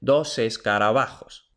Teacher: La S final de dos no se queda al final de dos, sino que pasa al principio de la siguiente palabra. · La B de escarabajo, por supuesto, es aproximante porque aparece entre dos vocales.